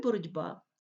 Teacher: є би дзвінкий б дзвінкий ділиться своєю дзвінкістю з глухим і глухий звук ть не витримує сусіда дзвінкого і теж собі стає дзвінким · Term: уподібнюється за дзвінкістю